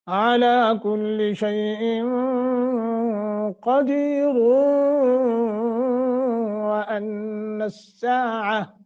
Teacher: ہاں اگر آپ اس کو یہاں رکتے نہیں ہیں تو پھر را موٹی ہوگی، عَلَى كُلِّ شَيْءٍ قَدِيرٌ وَأَنَّ السَّاعَةَ، اب را کو موٹا پڑھیں گے چونکہ ہم نے یہاں وصل کیا ہے